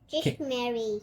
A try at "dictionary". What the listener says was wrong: no, that's wrong. No, not Mary. It's nary. Let's split the syllables. Dictionary.